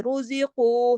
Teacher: قاف موٹا پڑھا جائے گا اور 2 حرکت کھینچ کے